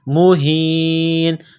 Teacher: یہ چشمے والی ہا ہے، صرف منہ سے ہوا نکالنے کی طرح پڑھیں گے